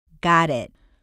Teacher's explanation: the way the tip of your tongue flicks on the bumps of the top of your mouth and the fact that the air doesn't pop out at the end of the word